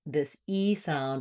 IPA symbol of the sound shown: i